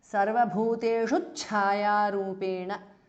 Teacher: after sarvabhuteshu there is a small cha, half cha introduced because of sandhi. So it becomes sarvabhuteshu chayarupena because of sandhi.